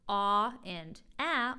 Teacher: ah and ah are further down and back in the mouth